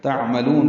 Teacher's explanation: تعملون عین ساکن پہ اظہار، میم کو جلدی پڑھیں گے